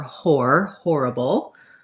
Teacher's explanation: the O goes together with that R. It's the diphthong or, horrible. You might hear that a little bit as horrible, some places with a little bit of an aw.